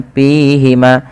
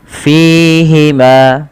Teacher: Fa memiliki salah satu sifat-sifat hams yang di mana Ketika melafalkannya Harus mengalirkan nafasnya dan teman-teman tidak boleh menggunakan huruf P ya Jangan dibaca dengan